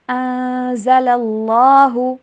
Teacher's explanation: ان کے اوپر اخفا کیجئے اور اللہ کے نام کو پر کر کے پڑھیے